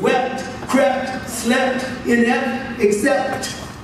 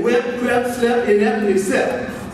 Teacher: So wept, crept, slept, inept, except that PT configuration, that's a double articulated stop. P is a stop, T is a stop, putting a W, two stops together would be a doubly articulated stop.